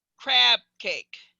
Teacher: So if I said crab cake, I'm saying a P there, but you're not perceiving it as a P. You're perceiving it as a B because I've lengthened that vowel enough.